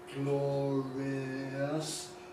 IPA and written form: ˡglɒrɪəs (glorious)